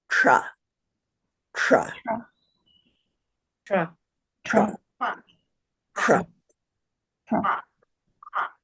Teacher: So we'll say cha, we'll say the letter cha, putting your tongue in the palatal position.